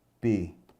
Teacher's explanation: o U, nesse caso, seria uma vogal mesmo, ele não é semivogal, ele está sozinho na sílaba. E quando o U está sozinho na sílaba, ele é vogal.